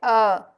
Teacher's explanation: हिंदी में अ स्वर केंद्रित स्वर होता है जिसके उच्चारण में जीभ का मध्य का भाग थोड़ा सा ऊपर की तरफ उठता है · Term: मध्य स्वर